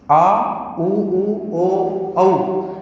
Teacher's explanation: ये 500 स्वर जीभ के पश्च भाग से बोले जाएंगे, या इन्हें बोलते समय जीभ का पश्च भाग सक्रिय रहेगा, क्रियाशील रहेगा। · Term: पश्च स्वर